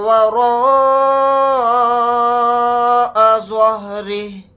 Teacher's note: پھر یہاں پر زوا کو موٹا یعنی پر پڑھیں گے، را کو باریک پڑھیں گے کیونکہ را کے نیچے زیر ہے. ہا کو ساکن بنا کر پڑھیں گے حالت وقف میں.